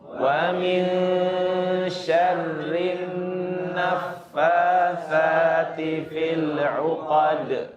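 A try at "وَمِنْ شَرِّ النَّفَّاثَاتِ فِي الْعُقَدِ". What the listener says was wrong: انتبهوا للراء. ومن شر ري إتمام الحركة في الراء، وأيضا النف فا مرقق، ليس فا.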